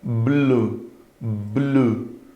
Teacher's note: Explodiu no lábio, a língua já vai para o céu da boca.